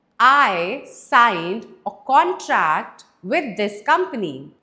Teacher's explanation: it's a noun, so we have stressed on the first syllable